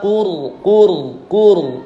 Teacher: qur itu ra-nya tafkhim, tebal. Ba qurba wal yatama wal masakini wa qulu mad asli dua-duanya.